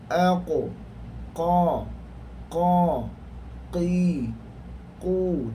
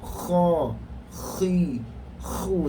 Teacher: Huruf qaf tidak ada angin. Aqo, qa, qi, qu, dan bunyinya satu, clear saja.